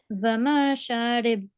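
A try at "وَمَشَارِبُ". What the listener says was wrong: Vamasharibu. You don't have to prolong on the meme, only on the sheen, okay? Because there is an alif madda. So, Vamasharibu. Make sure you don't do prolong on the short strokes, okay? And also don't mispronounce the stroke.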